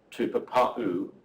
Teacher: So there's a glottal stop before the U